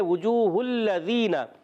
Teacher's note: ہا کی پیش کو لام سے ملانا ہے، لام مشدد، ذرا رک کر ادا کریں گے،